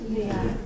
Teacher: Entonces, esto originalmente fue consonante que alveolar. La consonante alveolar se convierte en la consonante ápico dental por la asimilación con la consonante que le sigue.